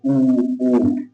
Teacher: तो जो वृत्त मुखी होते हैं जिसमें कि जो हमारा जो होठ है होठ की आकृति जो है वृत्त वाली होती है